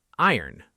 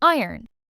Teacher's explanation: The O almost disappears.